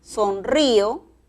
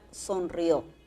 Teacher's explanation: le ponemos la mayor fuerza de voz ya no a la i sino a la o